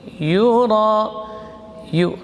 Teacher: Yura, yu, rakhawa dan jahar. Ra huruf takrir, maksimal getarannya 2. Yura, ada alif mad kemudian ketemu dengan hamzah menjadi mad wajib muttasil, panjang minimal 4 harakat, maksimal 5.